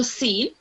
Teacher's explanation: Because seen, when you say seen, you smile, so seen. And it's not a thick letter, it's not a heavy letter, it's a light letter, which means the sound will be thin